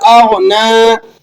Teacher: غین موٹے حروفوں میں سے ہے۔ ٹھیک ہے، اور یہاں پر آپ نے قلقلہ نہیں کرنا